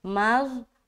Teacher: اس کے بعد میم کو ہم غو سے ملا رہے ہیں، غو ایک موٹا حرف ہے، موٹا نکالنا ہے، مغ اور بغیر سیٹی کے ادا ہوگا